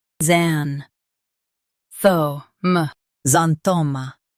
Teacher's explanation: Emphasize THOH and soften m.